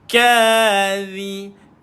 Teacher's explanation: Lidah dikeluarkan, sentuh dekat bawah gigi atas.